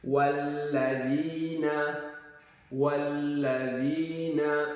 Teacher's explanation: You don't prolong this wa, no, because of shadda.